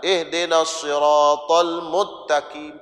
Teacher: Sin tu dah masuk dalam ta. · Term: idgham